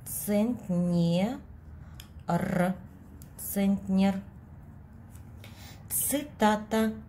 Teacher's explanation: Мы с вами знаем, что звук «ц» Ц всегда твердый, независимо от того, какой гласный находится после него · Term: звук Ц всегда твердый